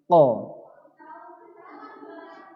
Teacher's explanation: Maksudnya bunyi huruf qaf ini keluar dari pangkal lidah dekat dengan kerongkongan. Jadi persimpangan atau pembatasan dari rongga mulut ke rongga kerongkongan yang dihimpit ke langit-langit mulut bagian belakang.